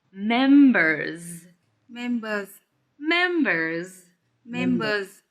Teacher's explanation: it's plural. So we need to hear the z at the end.